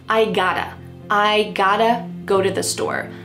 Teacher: Now, just to let you know, sometimes in American English when there is a present perfect verb tense like I have got to do something with the word have, sometimes we drop have completely, especially with got to, we might just say I got to.